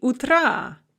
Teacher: Утро has the stress on the first syllable, but we put it in the genitive for this expression, and it becomes утра, n-stressed. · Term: stress shift